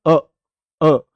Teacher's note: तुम्हें अपने जो तुम्हारी जीभ का बीच वाला हिस्सा है वो थोड़ा हल्का उठता हुआ दिखेगा